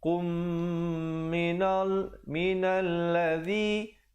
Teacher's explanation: Qum minalladzi, zi di hujung lidah.